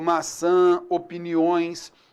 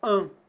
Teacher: indica para o leitor que ele tem que ler aquele A nasalizado, an, beleza? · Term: nasalização